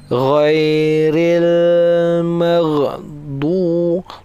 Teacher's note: Dia macam bunyi ra, tapi dia ghin. Dia ada getaran dekat dalam tekak. Macam tu. Ghairil ada getaran dekat tekak.